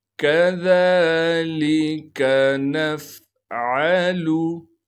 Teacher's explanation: आइन को साफ करके गले से अदा करना है।